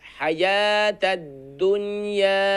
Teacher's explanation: हा को short sound करेंगे क्योंकि हा पर सिर्फ और सिर्फ जबर है